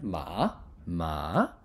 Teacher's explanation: fluidly see see next one is rising tone Rising tone that's basically going from low you're dipping down low and you're going high